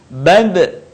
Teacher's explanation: Ketika huruf Ba dalam posisi mati, suaranya terdengar mantul.